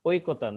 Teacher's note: ঐ এর উচ্চারণ হবে ও রস ই